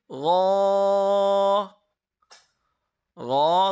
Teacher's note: غو گلے کے اندر والے حصے سے ادا ہوگا